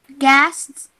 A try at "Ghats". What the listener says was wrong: No, there's no S before it, so it's G-H-A-T-S, so it's Gats. Like if you're saying a cat, cats, but with a G. Gats.